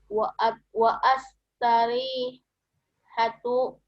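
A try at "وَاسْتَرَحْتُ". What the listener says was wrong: Wa astarihu ya, nggak pakai tuh ya belakangnya ya.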